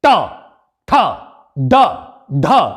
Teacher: ट वर्ग बोला जाता है मूर्धा की सहायता से।